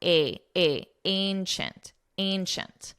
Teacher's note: And it's a very nasal a sound.